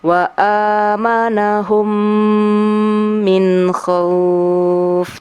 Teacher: membacanya dengan dengung atau gunna sampai 3 harokat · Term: idgham mislain